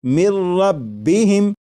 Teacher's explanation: لکھا ہوا ہے من، لیکن جب نون ساکن کو را میں ملا کر پڑھیں گے تو پھر نون ساکن کی آواز نہیں آئے گی، بلکہ میم کے بعد را کی آواز آئے گی، اور یہاں پر غنہ نہیں کریں گے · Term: ادغام